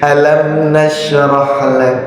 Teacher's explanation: itu adalah bacaan hams ya Ada nafas yang keluar itu jadi kedengarannya jadi lebih enak lebih enak belakangnya ya oke